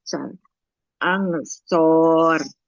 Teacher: Sama huruf shad nggak boleh jadi shin ya, tidak angsyur tapi ansur. Nah, nggak jadi sho tapi so. Satu tempatnya dengan huruf sin.